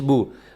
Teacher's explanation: با پیش بو. پیش کو لمبا نہیں کرنا, پیش کو مجہول نہیں پڑھنا, بو نہیں کرنا, بو.